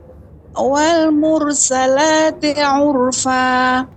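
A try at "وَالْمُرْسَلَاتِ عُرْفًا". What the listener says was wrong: Roknya dibaca dengan tebal. Wal mur. Kalau tipis wal mur. Wal mur. Dia tebal dia. terus dilatih lagi tebalnya untuk mur. Kalau tipis mur.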